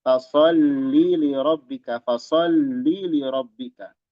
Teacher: Hati-hati menambahkan ya setelah lam.